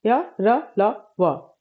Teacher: इन व्यंजनों के उच्चारण के समय जीभ मुख के किसी भाग को कहीं से भी किसी भी भाग को स्पर्श नहीं करती है, कहीं से भी टकराती नहीं है और इनका उच्चारण कंठ से होता है, इसलिए इन्हें अंतस्थ व्यंजन कहते हैं और इनकी कुल संख्या जो है वह 4 है।